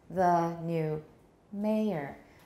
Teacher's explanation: we don't stress new because it seems to be background information assumed shared information the next one um okay and a lion